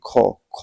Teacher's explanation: ख आप का क्या होता है अघोष और आपका क्या होता है महाप्राण होता है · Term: अघोष महाप्राण